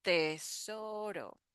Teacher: So here the R is the flap T sound.